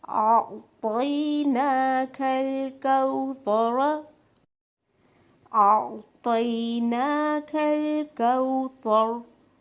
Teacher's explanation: اب را کے اوپر زبر تھی، میں اس کو ساکن کر کے رک جاؤں گی